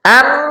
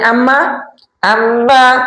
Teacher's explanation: মিম আর নুন উচ্চারণ করতে গেলে নাকের বাসির একটা প্রয়োজন পড়ে